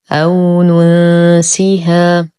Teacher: لدينا واو ساكنة ما قبلها مفتوح فهو حرف لين